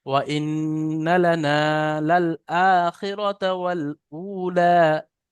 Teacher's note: وإنا لنال الآخرة والأولى فأنذرتكم نارا رد رد نارا এটা কি تلظى নারন তালাজ্জা ওয়াইন্না লানা, এখানে দেখেন ইন্না নুনটা গুন্না হবে কিন্তু টান হবে না, আর লানা নুনটা টান হবে।